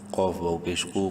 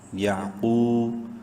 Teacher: پیش قو، قاف کو بھی خوب منہ بھر کے پڑھنا ہے، ایک الف برابر لمبا بھی کرنا ہے واو مدہ کی وجہ سے